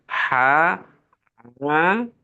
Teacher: Ain sama ha itu bersih tanpa ada berdengkurnya